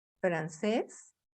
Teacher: la última sílaba tiene el sonido fuerte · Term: agudas